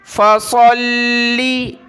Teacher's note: صاد لام زبر صل، لام ذیلی، صلی، فصلی۔ صاد کو موٹا کرنا ہے، اس کی جگہ سین نہیں پڑھنی۔